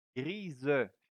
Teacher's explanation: Because the S here is between two vowels, so it will sound like a Z.